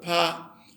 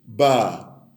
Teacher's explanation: So there is really no difference between pa and ba. The only difference is that if you produce a pa, there are no vibrations. And you can't, if you just put your palm on your head, you can actually feel no vibrations. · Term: voiceless sounds